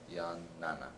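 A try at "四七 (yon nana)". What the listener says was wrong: Yon nana. Make sure you pronounce it yon, not yan.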